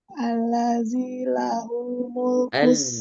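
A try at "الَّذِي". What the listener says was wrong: Alladzi, za ditipiskan lagi. Alladzi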